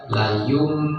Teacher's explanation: Ada yang baca layum benar-benar mim. Jadi ditutup layum itu boleh. Ada juga yang seperti ikhfa. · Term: iqlab